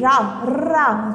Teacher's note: रा को पढ़ने में हमारे मुंह में क्या होता है? कंपन होता है। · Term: प्रकंपित